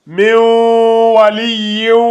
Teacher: On fusionne le waw avec le nun. Donc, au lieu de lire ici min, on part directement avec le wa.